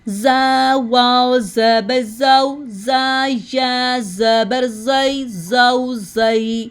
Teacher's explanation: اب زا میں زبان کی نوک نیچے والے دانتوں کے اندرونی کنارے کے ساتھ لگتی ہے اور زا پڑھتے ہوئے شدت ہوتی ہے